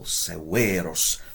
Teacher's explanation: Notice the long E in the second syllable.